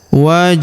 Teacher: Huruf hu langsung sambung ke lafaz Allah atau lafzul jalalah. Pada huruf lamnya kita tahan dan tekan karena terdapat tanda tasdid di atasnya. Lalu kita panjangkan dua harakat karena alif kecil di atasnya.